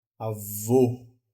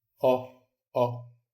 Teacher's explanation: O é um O, é mais redondo, certo? E é mais fechado o som.